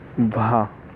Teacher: भा जो है स्पर्श भी है, घोष भी है, महाप्राण भी है, ओष्ठ व्यंजन भी है। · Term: स्पर्श घोष महाप्राण ओष्ठ